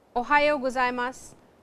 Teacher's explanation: ohayo-gozaimasu with a rising intonation